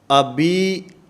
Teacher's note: یا معروف ادا کرنی ہے، مجہول نہیں کرنی